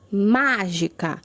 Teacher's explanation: Ma foi a mais forte, ela é a antepenúltima sílaba, por isso é uma palavra proparoxítona.